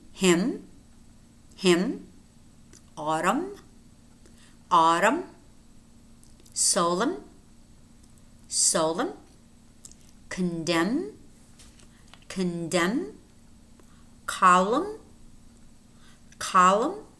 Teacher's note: Notice how these words have M and N. You do pronounce the M, but not the N.